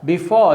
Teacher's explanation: the first one is not stressed it is a weak syllable unstressed syllable but the second one is the strong syllable and it is a stressed syllable so unstressed stress this is the rhythm of the word before